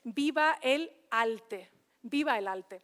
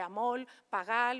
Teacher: la lateral por la vibrante en la coda silábica